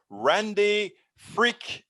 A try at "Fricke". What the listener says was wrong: real close fricky i pronounce the e on the end